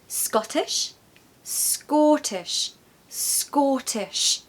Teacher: So listen, Scottish, Scottish, Scottish. It's like an O, it's elongating that vowel sound. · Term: short O